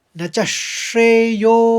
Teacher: तो तीसरा चरण इस तरह से पढ़ेंगे आप, न च श्रेयोनुपश्यामि। अवग्रह है तो यो को ज़्यादा खींचेंगे,